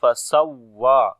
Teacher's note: On the waw there is shadda sign, we make nabr. Again we loud our sound on the waw when we connect. Fasawwa, and waw we long due to standing fatha on it.